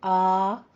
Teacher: आ नहीं, झटका नहीं, आ जैसे आप किसी को बुलाने के लिए कह देते हैं आ, तो इस तरह नरमी से आपने 2 हरकतों बराबर मुंह खोल के आपने इसको अदा करना है। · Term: अलिफ मद्दा